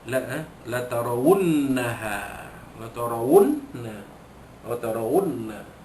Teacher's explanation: wajibul gunnah juga, dibaca dua harakat